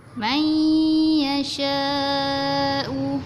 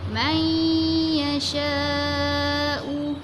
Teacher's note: Kita masukkan huruf nun ke dalam huruf ya sambil kita dengung.